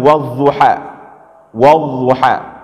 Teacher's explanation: Nah, bedanya adalah kalau ini lidah kita ya, Dhad itu dibaca dengan samping lidah, Pak ya, dengan tepi lidah.